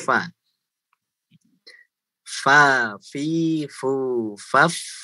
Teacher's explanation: Jadi ketika sukun, dia tetap mengalir di suara dan nafasnya.